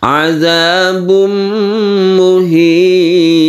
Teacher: Azabum muhim tanwin bertemu dengan mim kita sebut dengan idgham bi gunnah. Kita panjangkan bacaannya, kita masukkan ke huruf mim, maka dia membentuk tasydid mim.